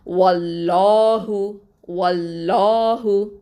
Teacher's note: இந்த லஃப்துல் ஜலாலா லாமை வந்து நல்லா உயர்த்தி தஃஹீமாக உச்சரிக்கணும், வல்லினமாக உச்சரிக்கணும்.